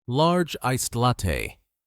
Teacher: The D from iced connects directly to latte. · notice how large iced latte is pronounced quickly, almost like one word.